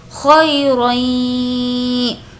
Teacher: یا جس پر جزم ہے اور اس سے پہلے زبر ہو تو یالین ہوگا، اس کو ہم کھینچ کر نہیں پڑھیں گے · ہم جو غنہ کر رہے ہیں، یعنی ناک میں تھوڑی دیر آواز کو روک رہے ہیں